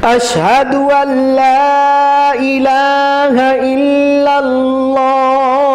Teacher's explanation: الا اللہ میں اللہ کو تھوڑا موٹا کر کے پڑھیں